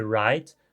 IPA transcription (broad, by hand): ɹajt